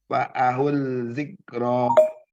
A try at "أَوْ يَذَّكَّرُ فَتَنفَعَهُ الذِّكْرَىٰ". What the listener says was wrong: Fa'ahudz bukan fa'ahul tapi fa'ahudz itu disambung antara hu ini dengan zalnya. Lamnya nggak usah dibaca lagi. Fa'ahudz karena lamnya nggak ada tanda baca sama sekali. Au yadzakkaru fatanfa'ahudz dzikra.